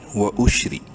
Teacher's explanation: واو زبر وا، حمزہ شین پیش اش، و اش. را زیر ری، زیر کی وجہ سے را کو باریک پڑھیں گے